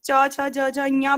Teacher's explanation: तो तालु पे स्पर्श हो रही जिह्वा